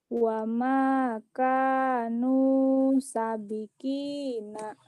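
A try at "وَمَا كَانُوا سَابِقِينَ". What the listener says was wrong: Saknya panjang. Wa makanu sabiqina.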